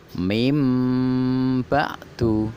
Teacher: Nun mati ketemu dengan huruf ba berubah menjadi mem mati. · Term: iklab